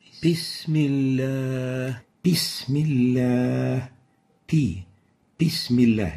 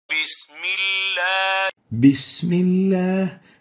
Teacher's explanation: The first mistake of the ba is whispering the ba so it sounds like an English P